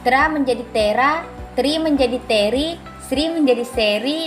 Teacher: kedua yaitu penambahan fonem atau anaptiksis anaptiksis atau suara Bakti adalah perubahan bunyi dengan jalan menambahkan bunyi vokal tertentu di antara dua konsonan untuk memperlancar ucapan bunyi yang biasa ditambahkan adalah bunyi vokal lemah dalam bahasa Indonesia